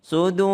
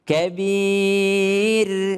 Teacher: huruf ro-nya di ujung menjadi tebal. Kenapa tebal? Karena ada huruf dhammah sebelumnya.